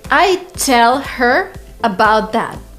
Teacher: There is no like stress in every single word. So when these words go unstressed, people tend to just omit the letter H and the sound that it corresponds to.